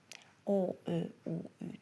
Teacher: Dodaqlanan saitlər irəli gəlir dodaqlarımız və dairəvi şəkil alır. O, ö, u, ü dodaqlanan.